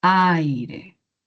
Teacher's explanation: La mayor fuerza de voz en la A junto a la I sonaría así, aire. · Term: diptongo